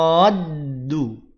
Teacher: ro-nya dibaca panjang 6 harokat, tekan pada huruf dal. Masukkan pada huruf dal. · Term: mad lazim musaqal kilmi